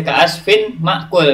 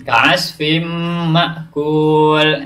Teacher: tanwinnya ini tidak dibaca ka'asfin ma'kul, tapi ka'asfim, dilebur ke huruf mim. Ka'asfim ma'kul.